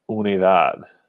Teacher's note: it's a d at the end and we stress the last syllable